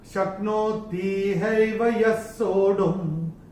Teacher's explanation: ये जो पहले चरण में य के बाद जो विसर्ग आ रहा है, उसके बाद का अक्षर है स, और विसर्ग के बाद जब श, श या स आता है तो विसर्ग का उच्चारण आधा श, श या स होता है। यहां पे स है तो आधा स होगा।